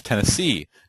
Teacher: a foot that contains three syllables the first two are unstressed and the third is stressed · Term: anapest